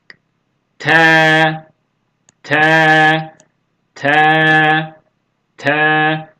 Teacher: ucunu ön dişlerin dip etlerine doğru hafiften dişlere değerek ve dip etlerine değerek telaffuz ediliyor